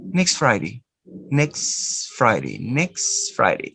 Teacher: In this case, the consonant which is in the middle is the consonant ta. You don't pronounce the consonant ta. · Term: elision